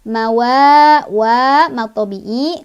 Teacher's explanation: karena ada alif sebelumnya ada huruf berbaris fathah dibacanya panjang 2 harokat.